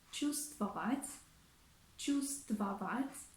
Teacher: in the word чувствовать, чувствовать, we also omit the consonant V because it's easier for the native speakers to pronounce it.